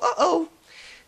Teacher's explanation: if you know the word oh like if I go oh that little pause in there that's the okina and that's the same thing that indicates a stop